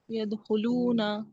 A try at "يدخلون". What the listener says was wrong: یدخلون، نون کو بھی نہیں کھینچیں گے، نون پہ زبر ہے، یدخلون